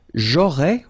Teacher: remember, final S not pronounced